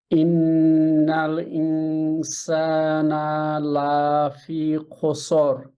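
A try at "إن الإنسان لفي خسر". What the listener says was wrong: লা ইনসানা, নাতে মাদ না, মাদ হয়ে গেছে। জবরের পরে আলিফ থাকলে মাদ, আলিফ নাই, মাদ নাই।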